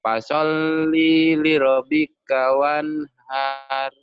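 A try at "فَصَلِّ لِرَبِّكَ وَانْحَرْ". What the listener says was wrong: Li-nya jangan panjang. Segera ke lam berikutnya. Fasholli li rabbika wanhar.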